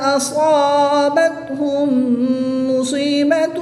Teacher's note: میم ساکن کے بعد دوسری میم آ جائے تو ادغام شفوی ہوتا ہے تو یہاں پر غنہ کر کے پڑھیں گے